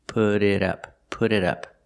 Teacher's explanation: The T in put changes to a fast D, put it, and the T in it changes to a fast D, put it up, put it up.